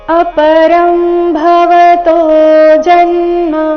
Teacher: ಅನುಸ್ವಾರ ಅದರ ಉಚ್ಚಾರಣೆ ಅನುನಾಸಿಕ ಅರ್ಧ ಮ ರೀತಿ ಯಾಕಂದ್ರೆ ಮುಂದಿನ ಶಬ್ದ ಭವತೋ ಭಿಂದ ಶುರುವಾಗ್ತಾ ಇದೆ ಪ ಭ ಈ ವರ್ಗದ